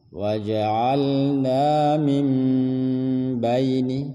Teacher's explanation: nun yang mati berubah menjadi mim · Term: iqlab